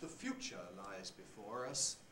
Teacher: of the sentence made emphasis synthetic with a high fall and then the last lexical item gets a low rise